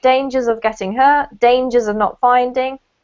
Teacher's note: you connect the s up to the o